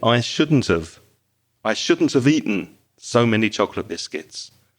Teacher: That have becomes very weak. And the t at the end of shouldn't joins with the vowel sound of, which is have.